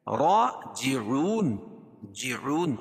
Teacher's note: کھڑا زبر قائم مقام الف مدہ کے اس کو ایک الف کے برابر کھینچ کے پڑھیں گے اور را پور پڑھی جائے گی.